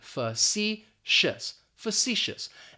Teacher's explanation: Now, the first thing that I want to point out is the pronunciation, because looking at this adjective, it may not be pronounced the way that it's spelled, facetious. That first syllable is going to have that schwa, that fa, and we're just basically going to pronounce the letter C, facetious, facetious.